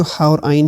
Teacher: یہ جو ہا اور عین ہے نا، یہ حلق کے درمیان والے حصے سے نکلتے ہیں